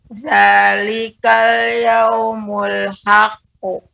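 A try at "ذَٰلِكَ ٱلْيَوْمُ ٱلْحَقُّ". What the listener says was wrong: Tasdidnya sebentar Ibu ya, tasdidnya agak lebih diperlambat dan lebih ditekan. Zalikal yaumul haqqu.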